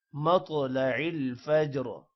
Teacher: طا پر قلقلہ بھی ہے اور طا موٹا بھی ہوگا، جبکہ فجر جیم پر قلقلہ ہے۔